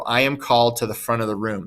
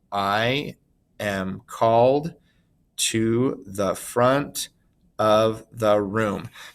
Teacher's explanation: we have multiple words but the last word in each of the feet is getting the emphasis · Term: anapestic line